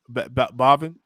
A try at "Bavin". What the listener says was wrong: Take the H out of there, man.